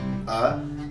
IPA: ə